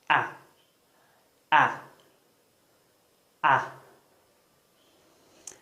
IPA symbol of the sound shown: æ